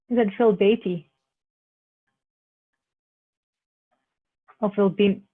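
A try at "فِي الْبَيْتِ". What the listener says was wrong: Phil Beatty. Can you hear there's no ah there? Because this hamza is what we call a hamzatul wasl. You actually go through it. The only time you actually say it is if you have to say it.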